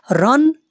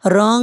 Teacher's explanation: তানভীনকে এক আলিফ পরিমাণ গুন্না করে পড়তে হবে